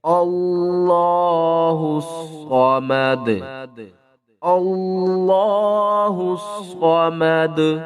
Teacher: زبر ما، دال پیش دو، صمد، اور وقف کی صورت میں دال کے اوپر قلقلہ کریں گے اور دال کے اوپر جو پیش ہے اس کو ختم کر دیں گے